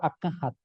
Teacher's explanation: cómo en guaraní intercala entre lo oral y lo nasal siaba oral sílaba nasal a a oral K nasal Ja oral